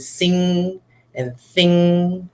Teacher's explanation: a lot of kids like to go nga, but there's actually no g sound in that at all